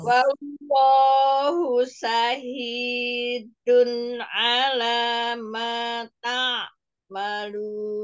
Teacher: tanwin bertemu ain, Ya. dibacanya idhar, tidak didengung.